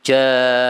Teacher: Kemudian karena ketemu dengan mim sukun, maka menjadi mat. Matnya jadi panjang sekali, 6.